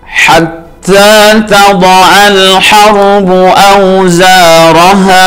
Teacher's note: Zanya mad tabi'i, kemudian ro-nya ini adalah ro tafkhim tebal ro, ya. Kemudian ha ini dibaca mad tabi'i karena fathah bertemu dengan alif.